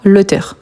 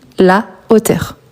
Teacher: Ça veut dire que je ne peux pas faireion, c'est-à-dire je ne peux pas enlever le a et ajouter un apostrophe à la place. Et je ne peux pas faire des liaisons non plus. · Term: H aspiré